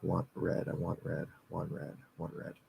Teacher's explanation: But I think the NT, you can generally just drop the T.